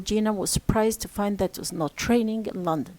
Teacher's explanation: Here's the number of stresses is 5. Okay, G and prized and fine and rain and London. 5 stresses and 5 rhythm units or 5 feet. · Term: rhythm units or foot